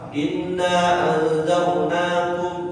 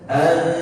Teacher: Nun mati bertemu zal, ikhfa hakiki. Cara bacanya ditahan. Anzal, bukan hanya sekedar numpang lewat.